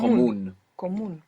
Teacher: Común with the accent on the end.